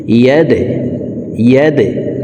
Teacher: দাল কলকলার হরফ, নিচের দিকে ধাবিত করে ধাক্কা দিয়ে উচ্চারণ করব।